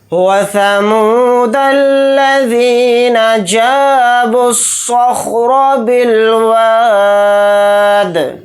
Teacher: دال کے اوپر جزم ہے تو دال کے اندر قلقلہ بھی یہاں پر کریں گے